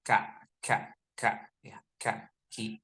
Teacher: kalau kaf itu kan biasanya ada hames ya, ada hames sedikit